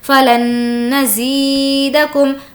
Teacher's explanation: ہمیں یہاں پر لام کو نون سے ملا لینا ہے